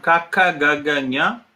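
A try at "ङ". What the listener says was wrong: it's not nya, it is nga, nga.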